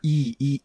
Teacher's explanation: quando você pronuncia i a língua tá pertinho do palato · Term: vogal palatal